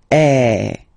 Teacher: So it's really open. I mean, the sound is really open, and normally your mouth should be opened a little bit more than with the accent aigu as well. Okay, so it goes like eh. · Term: accent grave